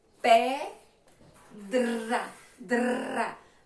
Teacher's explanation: Som fraco do R, a língua treme.